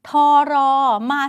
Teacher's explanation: ไม่ออกทั้งทองไม่ออกทั้งรอเปลี่ยนเสียงเป็นซโซ่ไปเลย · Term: ควบไม่แท้